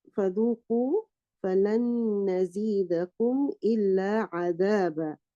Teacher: the noon has merged into the noon, the following noon, and you can hear the sound of the gunna.